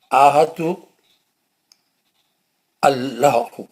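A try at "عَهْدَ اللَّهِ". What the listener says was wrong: لام ادارہ تھوڑا کم اٹھانا چاہیے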